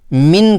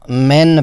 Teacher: ایک اور قسم کی غلطی کسرہ کو ضائع کرنا یعنی زیر کو پڑھتے وقت زبان کو پوری طرح نیچے نہ کرنا، جس کی وجہ سے کسرہ یعنی زیر کی آواز کمزور ہو جاتی ہے، یعنی انگلش کے آئی کی طرح ادا نہیں کی جاتی اور ترقیق برقرار نہیں رہتی۔